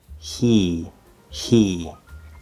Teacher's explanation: or very close to it when we start the h sound the h is just air so it's going to sound kind of like a voiceless e right and then e so you don't move your mouth you